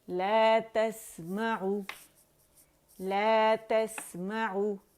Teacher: تس آواز بھی چل رہی ہے، اس میں رخاوہ بھی ہے